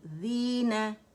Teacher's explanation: हमारे पास या मद्दा है और 2 काउंट के लिए आवाज़ नीचे जाएगी